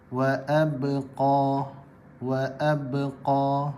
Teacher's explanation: Tekanan kuat menyebabkan dia perlu diketatkan lebih sedikit ketika menyebut huruf ba.